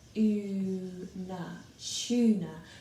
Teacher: Tuna sounds like it has a ch at the beginning, so it sounds like it should be spelled ch, una, tuna.